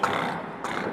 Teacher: bila nak melepas ra itu dia akan bergetar, tikrar ataupun takrir, dia akan getar dulu.